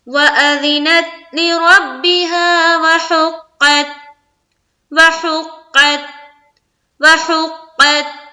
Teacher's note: اذینت بالکل الگ سنائی دینا چاہیے اور لِرَبِّهَا الگ سنائی دینی چاہیے، بالکل بھی دونوں کو ملانا نہیں ہے اور نہ ہی ایکو ساؤنڈ نکالنا ہے۔